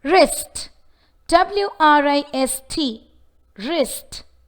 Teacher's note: The answer is that the word doesn't have an approximate consonant sound. Though the letter W is visible, yet since it is followed by the letter R, the W sound of the letter W is omitted.